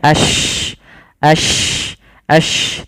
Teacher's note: Shin alirkan nafasnya karena dia ada sifat tafasyinya. Ash, tidak sampai bibir kita tidak usah sampai monyong-monyong juga, cukup saja tidak tidak, tapi yaitu kita intisarus saut.